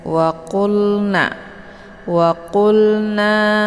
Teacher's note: أصحاب النار هم فيها خالدون Waqulna, wa dibaca pendek, kemudian qulna. Ini ada lam sukun, lamnya dibaca jelas ya, cukup ditekan saja dan dialirkan setengah.